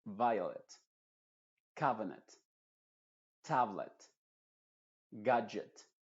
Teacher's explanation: en algunas palabras que terminan en ET, la E se pronuncia con la schwa